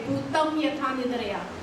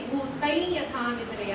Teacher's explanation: जर एखाद्या तिराईत माणसाला जो पहिल्यांदाच देवनागरी लिपी शिकतोय, एखादा फॉरेनर आहे, त्याला आपण अनुस्वार म्हणजे म असं सांगितलं तो वाचताना संयम असंच वाचणार, पण उच्चाराच्या नियमानुसार ते सै असा उच्चार, कारण पुढे य आल्यामुळे अनुस्वाराचा उच्चार य होतो